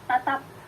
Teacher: bunyi p akan berubah menjadi bunyi tak lepas, plosifnya hilang, bunyi tidak lagi menjadi bunyi bilabial plosif, tapi hanya bunyi bilabial saja, manakala ia menempati posisi koda.